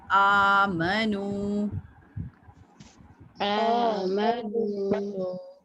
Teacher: کھڑی زبر کی وجہ سے اس کو ایک الف کے برابر یعنی 1 سیکنڈ کے لیے اس کی آواز کو اسٹریچ کرنا ہے, کھینچنا ہے.